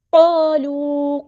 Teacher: letter ہے، پورا ادا کریں گے، الف مد آ گیا ہے، خالی الف سے پہلے زبر ہے یعنی فتح ہے تو یہاں پہ مد اصلی ہوگی، ایک الف کے برابر لمبا کریں گے